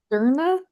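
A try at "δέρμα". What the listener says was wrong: Derma, right? Was that an M? Derma. Derma if you want to be like really fancy with it. Derma.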